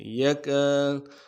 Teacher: لفظ جو یکاد ہے، یکاد یکا میں کاف کے بعد الف مدہ ہے، ایک الف مدار میں کھینچ کے